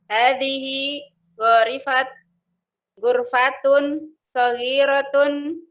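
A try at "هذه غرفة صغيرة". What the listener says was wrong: Titik. Intonasinya harus titik dong. Kalau ada titik berarti apa? Titik. Hadhihi gurfatun saghiratun.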